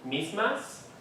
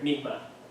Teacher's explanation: all of those s sounds are pronounced and articulated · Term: articulation of the s